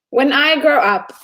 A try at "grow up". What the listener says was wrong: What is grow up, everyone? Not group up, grow up.